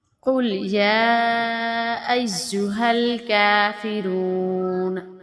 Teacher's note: قاف اسے ہم موٹا پڑھیں گے۔ قل یا ایھا الکافرون، کافرون، را کو موٹا کریں گے۔